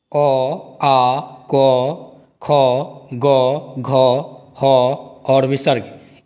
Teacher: अ, आ, क, ख, ग, घ, ह और विसर्ग। इन सभी वर्णों का उच्चारण स्थान कंठ है